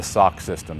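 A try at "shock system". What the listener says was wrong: I think you said sock. The sock system?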